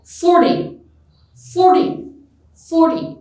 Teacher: 40 receives stress or emphasis on its first syllable